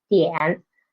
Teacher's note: Pitch 2 to pitch 1, and it won't rise up high. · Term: third tone